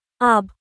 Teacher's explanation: বা উচ্চারিত হয় নিচের ঠোঁটের ভিতরের অংশ থেকে।